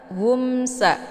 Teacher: mimnya dibunyikan secara jelas atau jelas bunyi m-nya. Cukup ditekan saja, tidak perlu ditahan. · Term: idhar syafawi